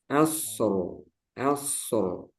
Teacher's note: jadi Shad itu memiliki sifat rokhawah